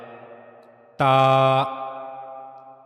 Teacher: जबान की नोक का ऊपरी हिस्सा ऊपर के दो सामने वाले दांतों के मसूड़ों की लकीर के साथ जब जाकर मिलता है तो वहां से ता अदा होता है। · زبان کی نوک کا اوپری حصہ اور یہ جا کر اوپر کے 2 سامنے والے دانتوں کے مسوڑوں کی لکیر کے ساتھ ملتا ہے تو تا ادا ہوتا ہے۔